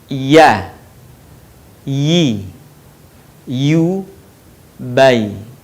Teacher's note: Huruf ya keluar dari tengah lisan, disentuhkan dengan langit-langit.